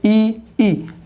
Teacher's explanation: जीभ के जो आपके आगे वाला भाग है वहाँ से बोला जाता है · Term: अग्र स्वर